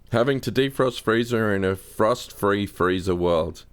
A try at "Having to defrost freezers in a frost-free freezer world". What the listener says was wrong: Pretty good, but you said freezer.